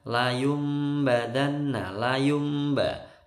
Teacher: Ini bacaan iqlab ya. Tanwin atau nun sukun kalau ketemu ba itu mingkem dengungnya.